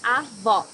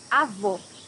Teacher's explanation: It should be an open O, as we say in Portuguese.